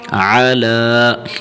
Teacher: عین کو زیادہ نہیں کھینچنا، عین کو بس زبر کے جتنا کھینچنا ہے جتنا اس کے اوپر زبر ہے.